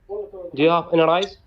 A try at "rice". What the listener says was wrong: Any rice. Rice, not rice. Rice. Too many rice. Rice. With se, not with ze. Rice.